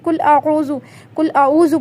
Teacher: پڑھیں گے تو دیکھیں قوف کو بھی آپ نے تبدیل کیا، قاف کی جگہ آپ باریک والے قاف کو لگا دیا اور اس کے بعد عین کی جگہ آپ نے حمزہ لگا دیا